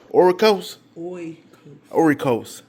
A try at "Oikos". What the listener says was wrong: I did not say an R. No R was in that word. Oikos.